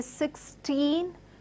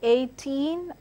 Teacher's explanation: words ending with teen are pronounced or rather stressed on the second part of the word, that is teen, teen, teen.